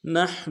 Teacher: نحن نون کو حا کے سامنے لانا ہے، حا کو گہرائی سے ادا کریں گے